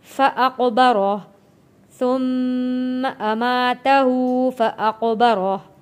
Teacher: یہاں پہ قاف حروف قلقلہ ہے، قاف کے اوپر جب جزم آ جائے گا تو یہ حروف قلقلہ ہوتا ہے۔ یہاں پہ قلقلہ کہتے ہیں آواز کا واپس پلٹ کر آنا۔